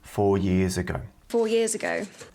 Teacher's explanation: not University it's university university and then for four years and the S is pronounced like a z and they are linked together